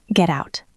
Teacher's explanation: make the T very soft, just a tap of the tongue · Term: flap T link